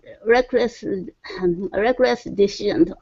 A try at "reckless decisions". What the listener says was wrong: So reckless decision. So what you're saying? You're saying decisions. Okay, so give me a good S there. So reckless decisions.